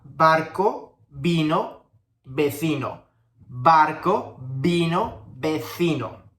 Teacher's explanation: For B and V, remember both sounds of both letters are pronounced in the same way, like a B.